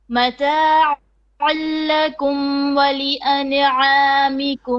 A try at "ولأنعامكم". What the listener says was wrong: ولأنعامكم. Don't bounce the noon. ولأنعامكم.